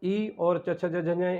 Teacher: जिह्वा जब तालु को छूती है तो ई और च छ ज झ इन वर्णों की उत्पत्ति होती है